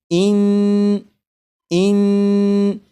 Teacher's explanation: जब आप पढ़ेंगे इन तो ज़बान तालू से लग रही है। जैसे इन अब आप 3 मरतबा पढ़िएगा और गौर करिएगा कि ज़बान तालू से लगी हुई है।